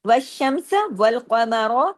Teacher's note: قاف کو ہیوی، قاف اس لیے کہ 7 موٹے حروف سے، اور را اس لیے کہ زبر کے ساتھ ہے. اگر رکیں گے تو والقمر، را پھر بھی ہیوی ہوگا.